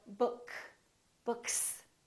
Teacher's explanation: S is voiced or voiceless for example if we say book this K is voiceless therefore the s that comes after that also remains voiceless which is a therefore one voiceless sound next to another voiceless